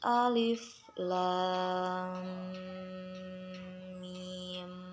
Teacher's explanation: Nah, kemudian mat lazim mutakal harfi ini dibaca dengan diidghamkan dan dipanjangkan sepanjang 6 harokat atau 6 ketukan